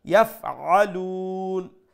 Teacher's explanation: Make sure that you pronounce the ayn from the middle of the throat so that it does not sound like Hamza. And at the end, we will do a mad al-arid, three alif long, and we will stop.